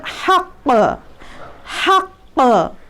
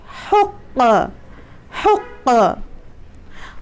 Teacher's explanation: इसीलिए heavy letter है एक तो क़ाफ़। दूसरा, निकलने की जगह बिल्कुल हलक से है, जो छोटी वाली पैलेट हमारी है, जिसको हम लोग तारक कहते हैं, छोटी ज़बान जिसको कहते हैं, हलक में, बिल्कुल ऐन हलक में बीच में, वहाँ से क़ाफ़ का मखरज है।